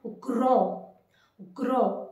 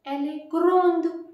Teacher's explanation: if you are using an E in the end, you have to pronounce this D